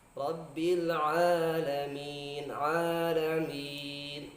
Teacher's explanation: ain keluar dari tengah tenggorokan, jadi bukan masuk di khayshum, sehingga kalau kita memanjangkan dengan mad tidak masuk ke hidung